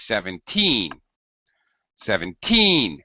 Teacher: put extra stress on these 17 17 with a higher pitch and a stretched valve sound we